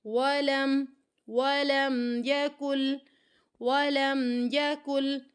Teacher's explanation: لام کو میم کے ساتھ ملاتے ہوئے یہاں پر رکنا نہیں ہے، غنہ نہیں کرنا، اظہار ہوگا یہاں پہ